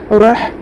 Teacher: را کے اوپر زبر ہے، ہا کے اوپر جزم ہے، پچھلے والے حرف را سے ملا کے پڑھیں گے. ہا حروف ہمس میں سے ہے، ہمس ہوگا